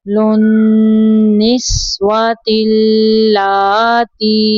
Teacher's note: نون مشدد پہ گننا کریں گے